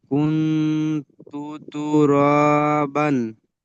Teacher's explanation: নুন সাকিনের আওয়াজকে নাকে তুলে এক আলিফ গুণনা করে পড়তে হয়